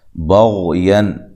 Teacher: غین کو موٹا ادا کرنا ہے، غین کو ہلانا نہیں ہے